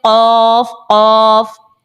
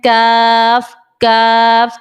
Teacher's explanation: قاف کو آپ نے موٹا پڑھنا ہے اور کاف کو باریک پڑھنا ہے